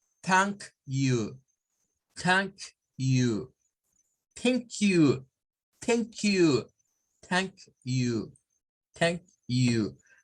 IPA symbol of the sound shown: θ